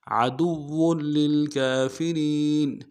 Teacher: اوپر کھڑا زبر ہے، ایک الف دال میں کھینچیں گے، اور را کو باریک کرتے ہوئے یا کے ساتھ ملائیں گے، یا مدہ ایک الف دال میں کھینچیں گے · واو کی تنوین کو آگے للکافرین کے لام کے ساتھ ملانا ہے، لام کے اوپر تشدید زور دیں گے